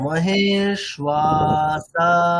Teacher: মকারের পর থেকে শুরু করে 3টে অক্ষর সবগুলোই দীর্ঘ, তাহলে 3টেকেই আমাদের টানতে হবে